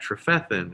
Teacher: it's accent on the second syllable